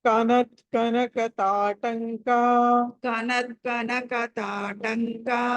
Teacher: ట తర్వాత అనుస్వారము క ఉంది కాబట్టి పంచమాక్షరం రావాలి